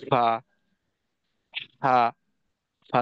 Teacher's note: হামসের যে হরফগুলি আছে এই হরফগুলি উচ্চারণের সময় আওয়াজের সাথে সাথে মুখ থেকে বাতাস বের হয়।